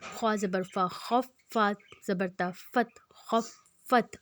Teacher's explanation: ہم نے فا پہ زور دیا، اس کا مطلب ہم نے فا کو دو دفعہ پڑھا۔ جس پہ شد ہوگا اس لفظ کو ہم دو دفعہ پڑھیں گے، دو دفعہ پڑھنے سے مراد اس پہ زور دیں گے، اس کی دو بار اس کی آواز پہ اس کے زور آئے گا۔